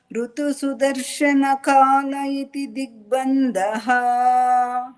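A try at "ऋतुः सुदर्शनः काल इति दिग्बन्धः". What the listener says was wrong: ಋತು ಅಲ್ಲ, ಹಕಾರ ತೂನಲ್ಲಿ ಸೇರ್ಕೋಬೇಕು, ಅಥವಾ ಸೂ ಕೆಳಗಡೆ ಇನ್ನೊಂದು ಸಾ ಒತ್ತು ಕೊಟ್ಕೊಂಡ್ರೆ ಆ ವಿಸರ್ಗ ಅಲ್ಲಿ ಕಂಪ್ಲೀಟ್ ಆಗುತ್ತೆ. ಋತು ಸುದರ್ಶನ ಕಾಲ ಇತಿ ದಿಗ್ಬಂಧಃ.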